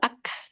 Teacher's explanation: Nah, kaf dia punya sifat hames. Betul. Dia ada nafas ya. Kita akan dengar ak ada nafas.